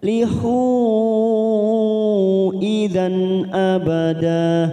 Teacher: Hu ada mat yang bertemu dengan hamzah di lain kalimat, mad jaiz munfasil 4 harokat kita panjangkan